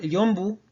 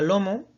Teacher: conserva ese grupo MB intervocálico